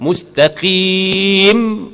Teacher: Tutup mulut. Mustaqim, mim makhraj di mana? Syafatan, dua bibir mulut yang dirapatkan. Mustaqim, rapat dua bibir mulut.